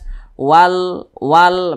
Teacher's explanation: karena cara membaca huruf lamnya ini dia dibaca izhar dibaca jelas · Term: izhar qamariyah